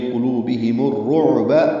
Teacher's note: میم کو الرعب کے روا سے ملا دیں گے